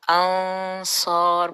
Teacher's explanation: اب یہ دیکھیں انصار میں نے کہا تھا اخفا میں نون کو چھپایا جاتا ہے اور ہماری ٹنگ اپنا منہ ریڈی ہوتا ہے اگلا لیٹر بولنے کے لیے. اور چونکہ اگلا لیٹر صاد جو ہے وہ ایک ہیوی لیٹر ہے تو ہمارا جو غنہ ہے وہ بھی ہیوی ہوگا. انصار بہت دھیان سے اس غنہ کو ادا کرنا ہے، کیونکہ یہ غنہ ہمارا موٹا سنائی دینا چاہیے.